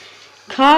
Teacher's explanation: ख एक महाप्राण और अघोष व्यंजन है। इसका उच्चारण स्थान कंठ होता है।